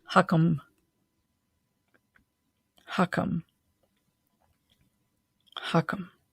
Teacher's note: And that's H. It's a breathy, embodied H. And the K, just a simple K, like the English K sound.